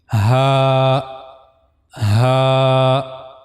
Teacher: the upper of the throat, then the middle of the throat and then the last part of the throat. So for pronouncing ha we have to use the lowest part of the throat which is on the chest side.